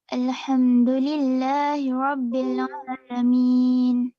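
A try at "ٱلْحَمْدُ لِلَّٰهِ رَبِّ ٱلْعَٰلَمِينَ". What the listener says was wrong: Hi-nya kasih lagi jelas sikit. Alhamdulillahi. Hi jelaskan.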